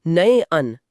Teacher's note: अगर मैं नयन को धीरे से बोलूं तो नए अन। हां ऐ की ध्वनि आ रही है।